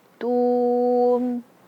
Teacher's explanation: Tu kenapa monyong? Karena dia berharkat dhammah. Tum. Jangan juga tum.